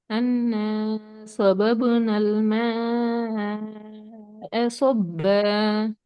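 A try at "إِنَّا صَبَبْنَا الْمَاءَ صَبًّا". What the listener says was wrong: Starting சுவாது கொஞ்சம் குறைஞ்சிட்டு திருப்பி போதுங்க. அன்ன சுவபபுனல். அந்த சுவாத ஃபர்ஸ்ட்டுக்கு வர சுவாத கொஞ்சம் தூக்கிங்க.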